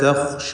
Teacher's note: ദറകൻ വലാ, ദറകൻ വലാ തഖ്ശ, തഖ്ശ എന്ന് പറയുമ്പോൾ ഖാഇ തഫ്ഖീം ചെയ്യേണ്ട ഹർഫാണ്, അത് പ്രത്യേകം ശ്രദ്ധിക്കുക. വലാ തഖ്ശ എന്ന് ഖാഇനെ തടിപ്പിച്ച് ഉച്ചരിക്കണം.